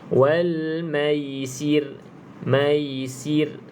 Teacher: Okey, yang sini nipis lah sebab ra, sebelum ra-nya ada huruf yang berbaris di bawah, kita kena baca nipis.